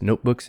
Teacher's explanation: so the t is unreleased